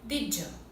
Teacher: Tem um pequeno J no meio. Did you. Não did you.